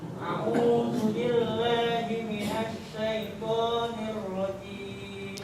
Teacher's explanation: A'udzunya kalau bisa jangan masuk ke pangkal hidung